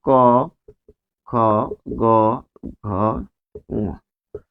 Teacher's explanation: ক বর্গের ধ্বনিগুলো হচ্ছে কন্ঠধনি